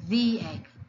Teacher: When the word begins with a vowel, the makes that long E sound.